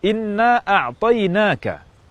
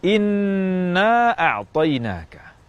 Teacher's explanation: nun tasdid seharusnya digunakan dengan gunnah yang lama, namun digunakan kurang lama.